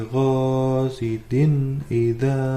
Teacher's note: tanwin bertemu dengan alif dibaca izhar ya teman-teman, dimana bacaan izhar adalah jelas tanpa mendengung